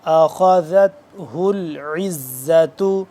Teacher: خا موٹا ذال نرمی سے پڑھیں گے۔ اخذتہ العزت، عین حلق کے درمیانی حصے سے تھوڑا سا کھچاؤ پیدا کر کے عین، اور آگے زا ہے سختی سے، یہ ذال ہے نرمی سے، اخذت ذال نرمی سے اور زا سختی سے۔